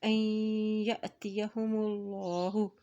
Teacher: جھٹکا دے کے ادا کیا جاتا ہے، این یاتیہم اللہ، دیکھیں اللہ کے نام سے پہلے پیش آ گیا ہے تو اللہ کا نام یہاں پر موٹا ادا کیا جائے گا